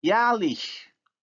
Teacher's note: Now the vowel a has moved from back to front because of the influence of the suffix vowel, which is also front. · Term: umlaut